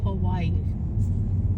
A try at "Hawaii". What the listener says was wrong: It's Hawaii, not Hawaii. Hawaii. Why do you say Hawaii? It's Hawaii. You're putting a huh. There's too much. You're putting too much. You're putting too much.